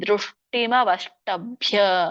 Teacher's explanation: ದೃಷ್ಟಿಮವಷ್ಟಭ್ಯ. ಎಲ್ಲಿ ಮಹಾಪ್ರಾಣ ಇದೆಯೋ ಭ ಅಂತ ಒತ್ತಿ ಹೇಳ್ಬೇಕು.